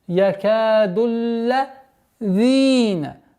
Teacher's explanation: долгота в размере двух огласовок фатха. С огласовки дамма уходим на удвоенный лям.